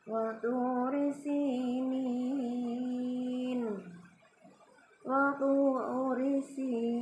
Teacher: Cuma karena di akhir ayat ya, maka huruf nun yang di depannya itu berubah ya, apabila diwakafkan berubah menjadi sukun, maka disebut mad arid li sukun ya. Mad arid li sukun sini bacanya bisa lebih panjang ya.